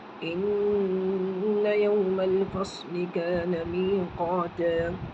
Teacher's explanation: إن يوم الفصل إن میں غنہ ہو جائے گا، میم لام میں مل جائے گا۔